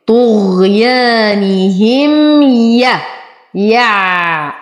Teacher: ألف ساكنة ما قبلها مفتوح فهو من الطبيعي حركتين طغيانهم، وتم كسرة النون وكسرة الهاء. نصبر على الميم وبعدها حرف الياء فهو إظهار شفوي